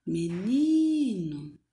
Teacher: nesta palavra, quando nós chamamos a palavra, nós percebemos que o ni é a sílaba tônica · O ni, ele é pronunciado mais forte